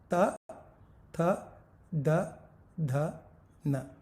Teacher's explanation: जिह्वा यानी जीभ दांतों के पीछे के हिस्से में लगने के सिवा इसका उच्चार ही नहीं होगा। त थ द ध न, दंत्य डेंटल है।